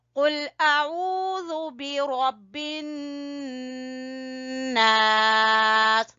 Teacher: नून मुशद्दद का गुन्ना करेंगे, यहाँ पे रॉ को पुर पढ़ेंगे।